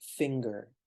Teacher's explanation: instead of using the NG sound he pronounces the G